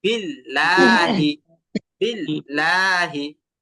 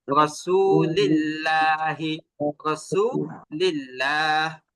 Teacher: এখন আল্লাহ শব্দের লামের আগে যদি জের থাকে, তখনই মূলত আল্লাহ শব্দের লামটাকে চিকন করতে হবে।